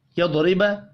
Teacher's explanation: را کو زیر کی وجہ سے باریک پڑھیں گے